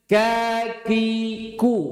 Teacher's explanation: Hamesnya kaf tidak boleh setara dengan syiddahnya kaf.